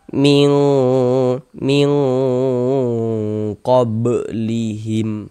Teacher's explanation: Nah, kemudian di bagian mingnya itu kita dengungkan, karena kita dengungkan jadi suaranya itu kita tahan ya, kita panjangkan sejenak sepanjang 2 harokat, kita gunnahkan, kita dengungkan.